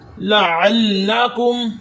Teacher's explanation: عین کی آواز آپ نے حلق کے درمیانی حصے سے نکالنی ہے، اور یہ شد والا حرف ہے، اس کو 2 دفعہ پڑھا جاتا ہے، اور آپ کو یہ بھی پتہ ہونا چاہیے کیسے پڑھا جاتا ہے۔